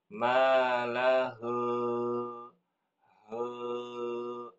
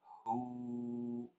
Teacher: He bukan He bukan tetapi hu monyongkan bibirnya